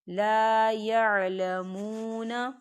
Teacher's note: واو ساکن ہے، واو ساکن سے پہلے پیش ہے، واو مدہ ہو رہا ہے تو اسے 2 حرکت کے برابر کھینچیں گے